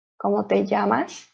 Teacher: as you can see there's a lot of double l uh we pronounce it as a ye